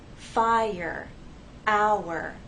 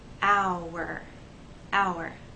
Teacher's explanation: the vowel sounds remain separate, but we still need to have a smooth gliding, a smooth connection from the first vowel sound into the second